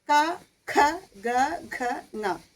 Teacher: നമ്മൾ വായു ഈ കഴുത്തിൽ വെച്ചിട്ടാണ് തടയപ്പെടുന്നത്